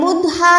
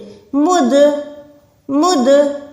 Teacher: दाल को प्रॉपर आपने लौटाएं, दाल को लौटाएंगे तभी कलकला साउंड प्रोड्यूस होगी